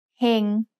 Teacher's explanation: heng has a low class consonant with a life syllable ending so it's mid-tone